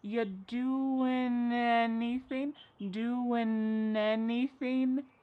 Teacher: And then the next word, anything. We sometimes drop the a and we're going to push those two together because there's two n sounds by side. · We link together doing because we're going to drop the G. It ends with the sound n, the N sound.